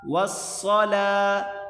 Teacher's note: واو کے آگے الف اور لام یہ نہیں پڑھے جائیں گے، واو کو صاد کے ساتھ ملا کر پڑھیں